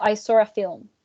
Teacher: we would add an intrusive R after the W after saw and before A